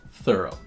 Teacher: In thorough, the TH is voiceless, which means that the tongue is still between the teeth, but the noise that it makes is much softer.